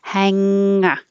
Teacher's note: The back of the tongue is going very high and touching the back of the roof of the mouth and kind of sliding back. Hanger. And it makes a nasal sound. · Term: NG combination